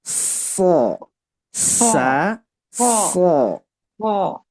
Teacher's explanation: Jadi kalau secara simpelnya jadi sa tapi naikin lidah bagian belakang.